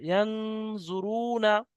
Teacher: ইয়ানজুরুনা, ইয়া নুন জবর ইয়ান, পেশ জু, ইয়ানজু, তাহলে এই নুন সাকিনের পরে হরফ ইকফা 15টির মধ্যে জোয়াদ এসছে, তাই নুন সাকিনকে একালি পরিমাণ গুণা করে পড়তে হবে